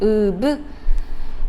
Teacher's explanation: 폐에서 공기가 올라옵니다. 그런데 브 하면서 입술이 닫혀버려요. 거기에 공기가 막 부딪히죠. 그러다가 입술을 열어주면 공기가 툭 튀어나옵니다.